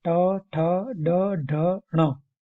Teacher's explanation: मूर्धा से निकलने वाले मूर्धन्य